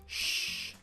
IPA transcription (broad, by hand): ʃ